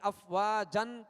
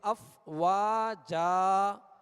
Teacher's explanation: الف سے بدل کر یعنی افواجن کہہ کر سانس آواز نہیں توڑیں گے بلکہ وقف کرتے ہوئے الف سے بدلیں گے یعنی ایک حرکت پڑھیں گے، زبر پڑھیں گے افواجا. یہ طریقہ ہے وقف کا.